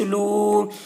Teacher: واو ساکن سے پہلے پیش ہے، واو مدہ ہوا، اس لیے واو مدہ کو ایک الف کے برابر کھینچ کر پڑھیں گے